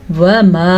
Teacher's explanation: وَمَا، مد کا خیال رکھنا ہے کیونکہ یہ مد ادا کرنی ہوتی ہے تقریباً 2 سے 2.5 الف کے برابر، تو تقریباً 2 سیکنڈ تک یہ مد لمبی ہوتی ہے